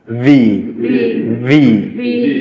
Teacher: ভিটাতে একটু ভাইব্রেট হবে ঠোঁট